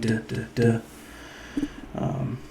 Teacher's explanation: You'll notice like your tongue when you make a duh starts like kind of behind your upper teeth, and so they call it like a dental sound